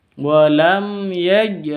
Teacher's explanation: ada qalqalah, huruf qalqalah jim, tandanya sukun. Huruf qalqalah itu harus bertanda sukun.